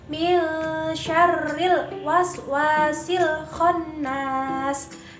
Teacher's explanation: yaitu dengan cara mengeluarkan suara nun sukun atau mematikan dan tanwin dari dalam rongga hidung sampai dengan terlihat samar sesudah itu berdengung 1-1 setengah Alif atau kurang lebih 2-3 harokat kemudian baru masuk untuk membaca huruf sesudah nun mati atau sesudah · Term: ikhfa Haqiqi